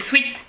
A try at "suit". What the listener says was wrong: Alors, ça se dit a suit. On ne prononce pas le i.